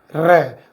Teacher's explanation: जब भी हम र का उच्चारण करते हैं तो हमारे स्वर यंत्रं में कंपन उत्पन्न होता है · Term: लुंठित व्यंजन